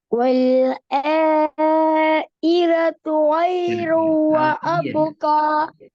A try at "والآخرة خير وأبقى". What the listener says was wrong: இ அல்ல ஆஹிரத்து. திருப்பி பேல ஆஹி. ஹாட சவுண்ட் எடுங்க. உச்சரிங்க. ஹா ஹி. ஹா. இதுல இருக்கிற முக்கியமான விஷயம் என்னடா என்ற சவுண்ட தெளிவா எடுத்து வரணும். அதான் முக்கியம். وَالْآخِرَةُ خَيْرٌ وَأَبْقَى. அதே நேரம் ஹார்ட உச்சரிப்பு வரணும். இ என்று போகக்கூடாது.